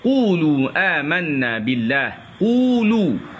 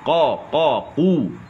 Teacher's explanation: Ambil dari pangkal lidah bertemu dengan lelangit lembut.